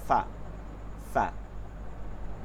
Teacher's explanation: ফা বাতাস চলতে থাকবে। ফা ফা।